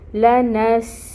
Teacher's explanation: سین ساکن ہے، اس کی جو صفت ہے اس کو واضح کریں گے، سٹی کو واضح کریں گے۔ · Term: سین کی سٹی